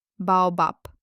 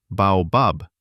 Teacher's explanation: at the end of a word, Russian consonants are devoiced